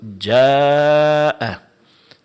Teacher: ada mad alif, setelahnya ada hamzah dalam satu kata. Ini dipanjangkan empat harakat. di dalam ilmu tajwid diistilahkan dengan mad wajib muttasil.